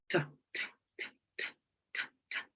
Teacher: in the case of the T, it's voiceless, it's alveolar